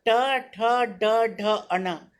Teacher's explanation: इन्हें मूर्धन्य कहा गया है क्योंकि इनका उच्चारण जीभ के मूर्धा से लगने पर ही होता है। जब तक जीभ से इसका स्पर्श नहीं होगा तब तक हम ये इस वर्ण को बोल नहीं पाएंगे, इसलिए इन्हें मूर्धन्य कहा गया है।